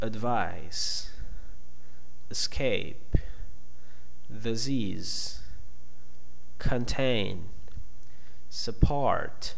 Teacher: So the first part of the word is unstressed. So we are going to use the schwa to represent the sound of this unstressed syllable.